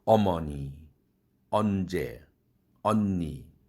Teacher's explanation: 한국어의 어는 긴장음이죠. 그래서 긴장음으로 발음하기 때문에 어머니, 언제, 언니 아주 어가 발음될 때 힘이 들어갑니다